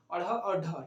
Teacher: जब हम लोग का जीभ जो है उल्टा होकर तालु को टच करता है, झटके से छोड़ता है